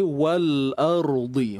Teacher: Huruf ra yang mati ni kita kena tebalkan dengan angkat pangkal lidah dan jangan muncung.